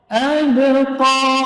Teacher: Ba huruf syiddah dan jahar. Qalqalah sughra. Maka dibaca tipis.